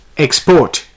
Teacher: here the stress is on the second syllable